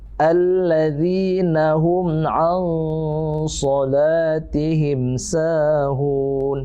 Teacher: jangan langsung bunyi di nun ya. Bukan an so, tapi samar-samar itu digantung setengah. Tapi mulutnya kita juga sudah mengarah ke huruf so. Nah, sambil berdengung ya, dipanjangkan. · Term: ikhfa